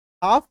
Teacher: एल का उच्चारण कर ही नहीं रहे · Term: साइलेंट